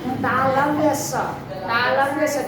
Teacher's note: तो बोलिएगा ना तालु में जाकर जीभ सटेगा, तालव्य स।